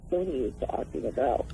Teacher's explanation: It's called a glottal fry, a frying voice.